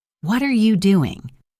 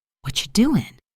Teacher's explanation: The phrase is what are you doing? Slowly it's very clear but quickly it becomes what you doing.